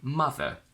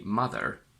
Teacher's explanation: In British, we say mother without the r. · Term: non-rhotic